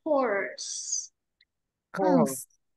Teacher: Âm R cong lưỡi âm S bật ra nhé.